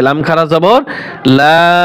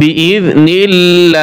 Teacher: আল্লাহ লামের আগে যদি জের থাকে তাহলে আল্লাহ লাম পাতলা হয়, লা পড়তে হয়।